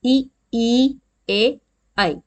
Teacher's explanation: अग्र स्वर, जिस स्वर का उच्चारण मुंह के अगले भाग से होता है।